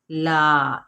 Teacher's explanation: ला, इसको हम खींचेंगे, लाम ज़बर अलिफ, ला है, एक अलिफ या दो हरकत के बराबर